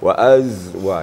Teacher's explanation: Sin, sod, zai itu mempunyai sifat safir. Desisnya agak menonjol gitu.